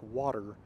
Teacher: where the R is actually the second syllable for most American English speakers like myself. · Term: syllabic R